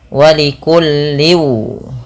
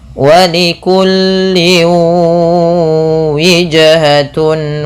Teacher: ketika tanwin bertemu waw, ini usahakan dimasukkan kepada huruf waw, ya, karena bacanya dimasukkan, dan ini kita kenal dengan istilah namanya idgham.